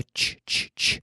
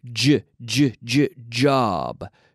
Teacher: Pero cuando usamos las cuerdas vocales, tenemos j, j, j, job. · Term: CH vocalizado